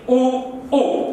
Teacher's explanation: ऊ ऊ इनको बोलते हैं तो होठ की आकृति गोल हो जाती है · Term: वृत्ताकार